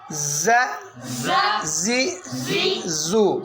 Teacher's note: یہ آگے زا اور زال، ان دونوں کی آواز میں فرق ہے. زا پہ سیٹی نکالیں گے، زال پہ نہیں نکالیں گے